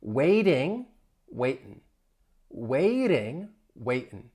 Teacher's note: often people in the US will drop that G. So instead of waiting, if I drop the G, it then becomes waitin'.